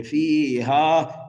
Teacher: الف مدہ کی وجہ سے ہا کو ایک الف کے برابر کھینچیں گے